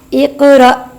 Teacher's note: حالت وقف میں ساکن حمزہ کو جھٹکے کے ساتھ پڑھیں گے